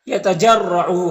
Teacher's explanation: رائے مشددہ کے اوپر زبر تو را کو پر پڑھیں گے